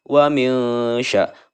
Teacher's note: antara idhar dan idgham cara membacanya samar-samar. Ya, dibacanya dengung. Nun bertemu dengan shin, namanya adalah ikhfa.